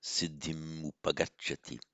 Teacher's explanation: And it's not a real sandhi, siddhim upagacchati. It behaves like a full consonantal M, because it's followed by a vowel, so no anuswara.